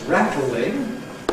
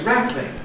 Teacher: Something that rattles can be described as ‘rattling’ [ˈræt l̩ ɪŋ] (three syllables) or as [ˈræt lɪŋ] (two syllables) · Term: compression